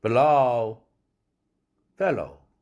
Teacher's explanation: below, fellow 같은 O지만 이중모음 O지만 액센트를 받은 below 할 때가 이 O라는 모음이 길어지고 fellow 할 때는 fell의 액센트가 있기 때문에 O에 없죠.